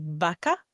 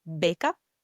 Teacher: the V you'll pronounce with the teeth on your lower lip, and the B you'll say by closing both lips. An example of a B word in Spanish is beca, which means a scholarship, beca.